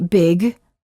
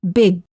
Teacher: hold the final g Sound by making sure that your tongue remains up in the back of the mouth when you're done saying the word words for practice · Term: final stops